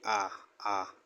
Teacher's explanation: आ जो है वो पश्च स्वर है